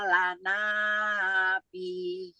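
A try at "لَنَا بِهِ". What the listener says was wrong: Ya, sudah tadi mengejanya betul, membacanya yang pertama tadi juga betul, yang kedua ini bih-nya tadi agak kepanjangan, kepanjangan. kotalana bih, ye, bih itu saja. Tadi agak kepanjangan.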